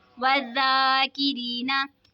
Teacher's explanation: तशदीद वाले हुर्फ को जमाओं के साथ पढ़ेंगे. या साकिन से पहले ज़ेर है तो या मद्दा होगा इसीलिए इसको खींच के पढ़ेंगे